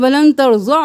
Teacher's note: کھڑی زبر ہے، ایک الف کے برابر کھینچیں